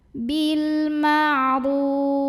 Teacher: jika berhenti ro-nya ini boleh panjang 2, 4 atau 6 harokat, tapi harus konsisten dalam sekali bacaan. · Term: mad arid li sukun